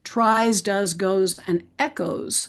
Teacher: So as we look at these word sums that reveal these consistently spelled elements that form these consistently spelled words, I would ask you to notice that in all of the last four words, tries, does, goes, and echoes, we spell the suffix es, but we don't pronounce the e in the suffix at all, and we pronounce the s as z